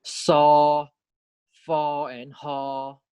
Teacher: more know n more we have fricatives 2 which means that there's turbulent airflow when we pronounce these consonants